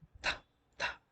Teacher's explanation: Here, tip of the tongue is placed in between upper teeth and lower teeth. So it is called dental sound.